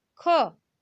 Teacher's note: आप जब ख बोलते हैं तो आपको ऐसा लगता होगा ख के साथ ह मिला हुआ है। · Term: महाप्राण व्यंजन